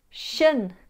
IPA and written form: ʃən (TION)